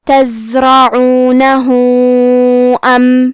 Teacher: یہاں حکم ہے مد صلہ کبرا، تو اس مد میں اپنی آواز 4 مد کے برابر لمبی کرنا ہے · کلمت تزرعونہ میں زے ساکن ہے تو ہمیں زے کو ظاہر کرنا ہے. حرف را پہ زبر ہے تو ہم حرف را کو موٹی آواز میں پڑھیں گے. عین کی ادائیگی حلق کے درمیان والے حصے سے ہے.